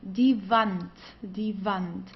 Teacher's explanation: W, okay, we pronounce it as V